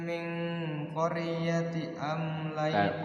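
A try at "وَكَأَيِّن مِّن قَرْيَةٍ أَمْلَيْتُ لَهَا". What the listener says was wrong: qaryatin tanwin itu. Qaryatin tanwin.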